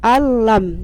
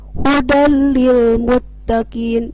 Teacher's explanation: Hurufnya hanya ada 2 yaitu lam dan ro. Nah bila guna artinya bila tanpa guna, tanpa dengung. Jadi harus dibaca sekilas saja. Contohnya bila nun mati ketemu huruf lam, alam. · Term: idgham bila guna